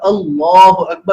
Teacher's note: اللہ اکبر لام جلالہ کو پر موٹا پڑھنا ہے